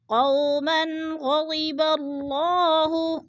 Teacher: وولین ہے، من 2 زبر تنوین، آگے حروف ہلکی میں سے غین آگے ہے تو ادھر ہم اظہار کریں گے، اخفاء نہیں کریں گے